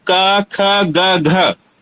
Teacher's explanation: चाहे नाक बंद करिए चाहे नाक को खोले रहिए, इनके उच्चारण में कोई भिन्नता नहीं हो रही है